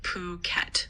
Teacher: It's pronounced kind of like Phuket, with the stress on the second syllable.